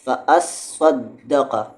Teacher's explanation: صاد اور دال مشدد ہے، سختی ہوگی آواز میں